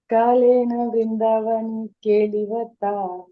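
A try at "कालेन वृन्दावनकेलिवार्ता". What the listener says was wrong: మాతాజీ మామూలు టోన్ భాగవతం టోన్లోకి రండి మాతాజీ. ఒకసారి గేర్ షిఫ్ట్ చేయాలి కొంచెం. కాళేన వృందావన కేలివార్త లుప్తేతు.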